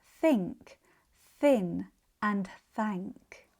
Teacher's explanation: This sound is closer to an F or an S. It has the same mouth position as the voiced th with the tongue slightly between the teeth, but we don't want the vocal cords to vibrate. It's more of an airy hissing sound like F and S. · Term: voiceless th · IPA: /θ/